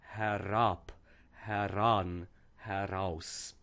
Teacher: it goes from being a closed E vowel to the open E, and then also that the R is no longer schwad, but it becomes part of the next word part.